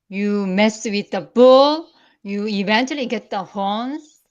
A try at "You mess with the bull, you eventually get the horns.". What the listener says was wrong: Okay. A little bit too nice. A little bit too nice. You should be try to say it. Try to be meaner.